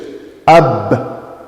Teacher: And that's the makhraj of ba, between the two lips.